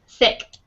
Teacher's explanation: when you say the I sound, your tongue is kind of more relaxed too